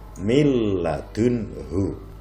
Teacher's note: Contohnya mil ladunhu, ada nun mati bertemu dengan lam, nun mati diidghamkan ke dalam lam, tetapi cara membacanya tidak berdengung, mil ladunhu, tidak mil ladunhu, tidak boleh, harus mil ladunhu. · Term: idgham bila gunnah